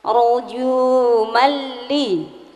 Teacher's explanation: Artinya memasukkan tanpa dengung. · Caranya dimasukkan tanpa dengung. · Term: idgham bila gunnah